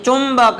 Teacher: ચુંબક એટલે લગભગ મ બોલાય